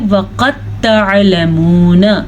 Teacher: یہاں پہ دال نہیں پڑھا جائے گا بلکہ تا پڑھی جائے گی